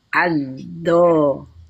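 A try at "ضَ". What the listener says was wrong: Terus jangan terlalu ditekan, dia lembut keluarnya.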